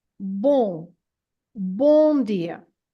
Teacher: word b it has an an m at the end and this m at the end is not to be pronounced as a m sound as an M sound it's just there to make the nasal sound of the O